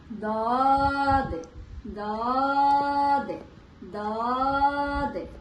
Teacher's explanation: জিহ্বার গোড়ার কিনারা উপরে মাড়ির দাঁতের গোড়ার সঙ্গে লাগাইয়া